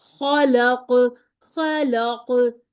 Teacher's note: लाम को पतला कर लें कफ को मोटा भी करें और यहां पर आपने कलकला भी करना है · لام کو پتلا کر لیں، قوف کو موٹا بھی کریں، اور یہاں پر آپ نے کلکلا بھی کرنا ہے